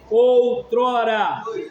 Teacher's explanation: Tá descendo, ó. A força tá no O. Ditongo oral decrescente.